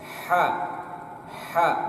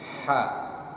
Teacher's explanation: Usahakan ada udara keluar sedikit dan kemudian penyebutannya tipis. Ha, bukan ha, tapi ha.